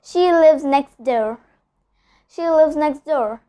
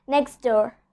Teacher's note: I'm not pronouncing the T sound over here. I'm just skipping the T sound. Instead, I'm telling next door.